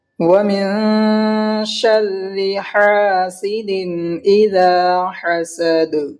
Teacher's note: بڑا ہا حلق میں سے نکالتا ہے اور چھوٹا ہا کو ہم نارملی بول دیتے ہیں. اور دال میں قلقلہ ہوگا. · دال میں دو زیر کی تنوین ہے، اس کے بعد حروف حلقی کے 6 حرف میں سے حمزہ آیا ہے تو اظہار کا قاعدہ ہوگا یعنی ظاہر کر کے جلدی پڑھیں گے